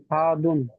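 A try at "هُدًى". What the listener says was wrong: হাতুন করছেন কেন আপনি? হুদান বলছেন, হাফের হু ধরে রাখেন মাথায়, হাফের হু বললেন হুটা ধরে রাখেন। আর দাল দো জবর দান, হাদান বলছেন। হুদান পড়ছেন আপনি, বানান করছেন হু, আর পড়াশোনা করছেন হা। হুদান, আমার সঙ্গে বলুন হা পেশ হু, আমার সঙ্গে বলুন হা পেশ হু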